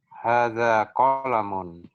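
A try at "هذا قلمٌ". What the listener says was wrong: Nah, qafnya pendek. Qalamun.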